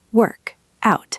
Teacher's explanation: >> This happens when a word ends with a consonant sound like the K in work and the next word begins with a vowel sound like the O in out. If you were reading a list of words, you would say work out. You would stop your breath between the two words. But in natural speech, we never stop the breath.